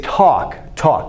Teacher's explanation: this L in a word like talk, it has absolutely no consonant value. The L in talk is functioning like the U in August, or it's functioning like the W in law.